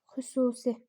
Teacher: Xüsusi u uzanır. Xüsusi u uzanır və u qapalıdır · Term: uzun tələffüz olunan qapalı sait